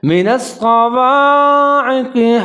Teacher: قاف کو موٹا پڑھنا ہے، کلکلا کرنا ہے